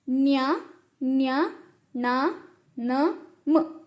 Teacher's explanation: ಮೂಗಿನ ಸಹಾಯದಿಂದ ಉಚ್ಚರಿಸುವಂತಹ ಅಕ್ಷರಗಳನ್ನ ನಾವು ಅನುನಾಸಿಕ ಅಂತ ಹೇಳ್ತೀವಿ